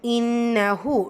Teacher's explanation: நூன் முஷதா குன்னா செஞ்சு ஓதணும்